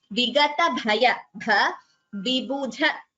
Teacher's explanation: Vigata bhaya, bha, vibudha, dha is Mahaprana.